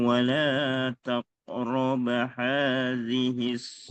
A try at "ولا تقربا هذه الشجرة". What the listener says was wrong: ولا تقربا baknya panjang. Syajarata jaknya nggak panjang.